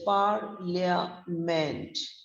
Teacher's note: the first syllable par is long stressed rhyming with card but the other two syllables have the weak vowel